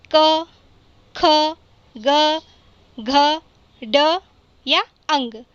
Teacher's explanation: जब भी आप इन 5 अक्षरों को, 5 वर्णों को बोलेंगे तो जो हवा है वह हमारे गले से बाहर होगी, हमारे कंठ को छुएगी।